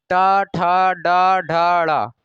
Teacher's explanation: रगड़ाहट और जीभ झटके से बाहर आ रही है तो यहां पर इसका उच्चारण स्थान हो जाएगा मूर्धा।